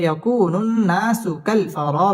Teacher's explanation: ইয়াকুনুন হরকতের বামে নুনের মধ্যে তাসদিদ আসছে, নুন ওয়াজিব গুন্না, গুন্না করে পড়তে হবে।